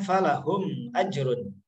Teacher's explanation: harus dibaca jelas karena ada mim sukun atau mim mati yang bertemu dengan huruf alif atau huruf hamzah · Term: izhar syafawi